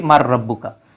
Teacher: রাব্বু রাব্বুকা প্রশ্নবোধক হ্যাঁ তখন আমরা এটাকে পড়ি কি মান রাব্বুকা যেহেতু নুন সাকিনের পরে রা থাকলে সেটা সংযুক্ত হয়ে যায় তখন আমরা পড়ি মার রাব্বুকা মানে তোমাদের রব কে এটা হচ্ছে